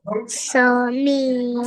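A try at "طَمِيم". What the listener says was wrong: Sa no, ta meme.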